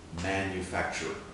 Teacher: it's almost like the final ER is combined with the r sound in front